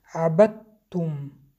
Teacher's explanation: عابدم ما قاعده ادغام با غنه ما مد طبیعی عبدتم ادغام متجانسین 2 حرفی که مخرجاشان یک است حرف دال و حرف ت. به این سبب حرف دال را نمیخوانیم حرف ت را 2 تا کرده میخوانیم